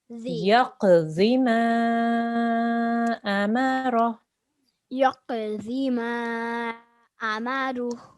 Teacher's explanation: Zod is a thick sound. So your tongue has to touch your bottom teeth from the side.